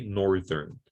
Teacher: the adjective for north has a voiced interdental fricative